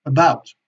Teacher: Y la famosa schwa, que también tiene muchas representaciones gráficas, como vemos, bueno, pues es un sonido neutro, que no es ni una E ni una A, y es un sonido que debemos hacer muy rápido, como si no hubiera prácticamente sonido.